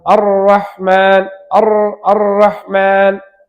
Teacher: நுனி நாக்கு அப்படியே மேலே உயர வேண்டும். வாய்க்கு மேல் பகுதியில் அதனுடைய நீளத்திலேயே மேலே உயர்ந்து மேல் பற்களுடைய ஈரில் அது இணைந்தால் ரா உண்டாகும்